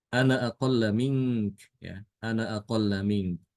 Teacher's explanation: Ketika dia diwasolkan, disambung dengan kata setelahnya itu alifnya hilang.